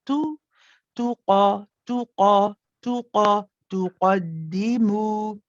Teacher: You've got your lips being circled for the dhamma. Whenever, remember we said whenever you have a letter with a dhamma, you always circle the lips.